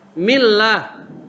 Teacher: Kalau yang kasroh seperti bismillah, mim kasroh mi, itu kasroh, itu tarkik namanya, tipis.